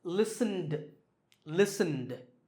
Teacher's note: the last sound is n, which is voiced